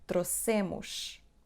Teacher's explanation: Acentuamos a palavra na segunda sílaba do fim, que é se.